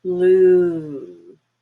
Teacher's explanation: blue really high up in the back and longer